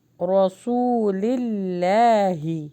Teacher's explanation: اللہ کے نام سے پہلے زیر آ رہا ہے تو یہ ہیوی نہیں پڑھا جائے گا، رسول اللہ نہیں پڑھنا، رسول اللہ باریک پڑھیں گے۔